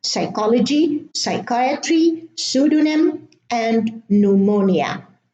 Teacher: In English, the P is silent at the beginning of the word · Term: silent P